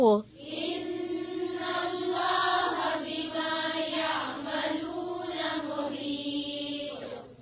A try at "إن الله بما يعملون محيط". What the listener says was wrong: محيط मीम की पेश को सही से पढ़ें إن الله